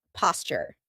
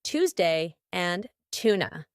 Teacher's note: That's because a t and a y sound together make a ch sound like in Tuesday